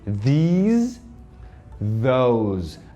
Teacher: Esses S's aqui, ó, do these e do those, tem som de Z. E a gente não fala essa letra E no final.